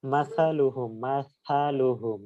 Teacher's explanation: থা উচ্চারণের ক্ষেত্রে এটা নরম এবং পাতলা এবং মুখ থেকে বাতাস বের হয়ে যাবে